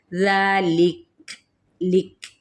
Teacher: ذالک، یہ ذا پہ الف مدہ، اور ساتھ ہی جب ہم وقف کریں گے تو وقف بالاسکان، اور کاف پہ ہمس ہوگا